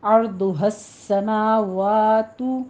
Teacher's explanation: سین کے اوپر تشدید ہے، ادا کیجئے سیٹی کے آواز کے ساتھ